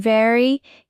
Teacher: For V in very, your teeth touch your lip.